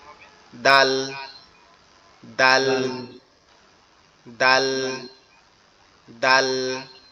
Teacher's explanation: এই জিহ্বার আগাটা সামনের উপরে দুই দাঁতের গোড়ার সঙ্গে লাগবে, লেগে উচ্চারিত হবে